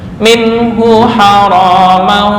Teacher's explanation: Jangan dengung, nun mati bertemu ha idhar halqi.